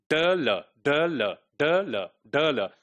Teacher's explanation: So in the case of D, the air is passing through the center of your oral cavity. But in the case of L sound, it is passing through the sides, and it is closed from the center, right? So that's why the sound is called lateral, right?